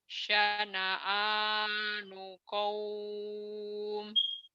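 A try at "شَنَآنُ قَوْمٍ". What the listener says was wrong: Kurang tebel. Kurang tebel.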